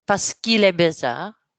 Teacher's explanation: Why don't we link que and il?